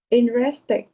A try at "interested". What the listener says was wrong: It's not invested. It's like tr. Interested. only 3 syllables.